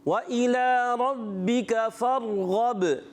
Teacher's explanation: وَإِلَىٰ رَبِّكَ فَارْغَب، وَإِلَىٰ رَبِّكَ فَارْغَب، جی ہاں، واو کی ادائیگی ہونٹوں کی گولائی سے، حمزہ کو خوب واضح کریں گے، کھڑی حرکات ایک الف کھینچ کر ادا کریں گے، را کو پر رکھنا ہے، با مشدد ہے اس لیے تھوڑا رک کر ادا کریں گے۔ فرغب، را ساکن سے پہلے زبر آ رہا ہے، پر ادا کریں گے، اور غین کو بھی پر کرنا ہے، با میں قلقلہ کریں گے، اس چیز کا خاص خیال رکھنا ہے۔ · بعض بچے فرغب را کو ہلا رہے ہیں، ہلانا نہیں ہے۔